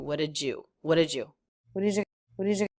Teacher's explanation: I'm combining the ending D with the word you to make the J sound so it sounds like Jew what a Jew what did you